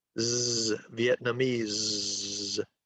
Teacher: in English, when we pronounce the word Vietnamese, the S is voiced.